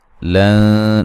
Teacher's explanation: نون تنوین کا باریک اخفا ہے